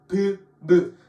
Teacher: 브의 입술에 소리가 걸리게 됩니다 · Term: 입술 소리